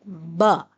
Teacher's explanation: با کا مخرج دونوں ہونٹوں کو ملانے سے یہ ادا ہوتا ہے اور اس کی آواز ہے ب۔